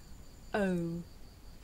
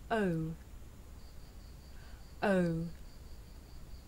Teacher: this is a diphthong a double vowel sound the shape the mouth makes changes from the beginning of the sound to the end it's pronounced oh did you notice how my mouth changed shape